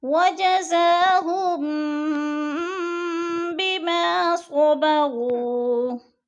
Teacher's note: ہم پہ اخفاء شفوی، میم ساکن کے بعد حرف با آ گیا ہے تو ادھر اخفاء شفوی ہو رہا ہے، یعنی ناک میں آواز کو چھپا کر